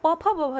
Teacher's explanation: प फ ब भ जो है इसका उच्चारण स्थान होंठ है हमारे। बिना होठों की सहायता के आप प फ ब भ नहीं बोल सकते हैं।